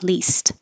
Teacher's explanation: the ED here sounds like a T because the final sound in the word lease is voiceless. So the ED sounds like a voiceless T, least.